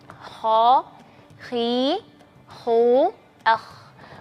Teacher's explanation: k memiliki sifat istila yaitu pangkal langit pangkal lidah di naikin ke langit-langit mulut ya